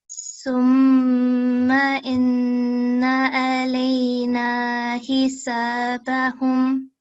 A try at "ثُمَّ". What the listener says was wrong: Okay, so thumma like this, okay? Not sum because it's not seen, it's tha. And tha is, the sound is made by putting the tongue in between your teeth. Thumma. Say that, please.